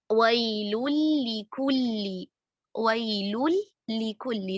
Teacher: ठीक है, इसी तरह लाम के साथ मिसाल देखें, वैलुल लिकुल्ली, वैलुल लिकुल्ली, तनवीन के बाद हर्फ लाम है, हम तनवीन को लाम के साथ मर्ज कर रहे हैं और इस तरह वो लाम जो है वो मुशद्दद बन रहा है। वही इस्तिलाही तारीफ जहन में रखें, हर्फ साकिन था, उसको हर्फ मुतहर्रिक में मर्ज कर दिया।